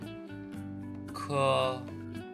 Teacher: Yang keenam, ada konsonan K. Suara pangkal lidah atau velar aspirasi. Pangkal lidah menyentuh langit-langit mulut.